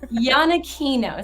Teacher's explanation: So the IA is like a phonetic YA, and the CH is pronounced like a hard K.